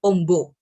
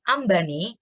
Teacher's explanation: perubahan vokal O menjadi A bila diberi imbuhan E atau Ne